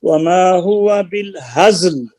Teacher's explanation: زا حروف صفیر ہے، اس کو سیٹی کے ساتھ ادا کرنا ہوگا